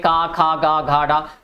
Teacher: जिन व्यंजनों क्या बात करते हैं, जिन व्यंजनों के उच्चारण में कंठ से होता है या उच्चारण कंठ से होते हैं और उच्चारण में जीभ का पश्च भाग और कोमल तालु का स्पर्श करता है